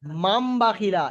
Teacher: সেই হিসেবে এই নুনটা আর নুন থাকবে না, নুন সাকিনটা আর নুন থাকবে না, এটা মিম হয়ে যাবে, নুনটা মিম হয়ে যাবে